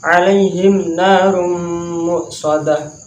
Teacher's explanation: mahrojnya gunna, bertempat di jalur hidung. Cara membacanya dengan mendengung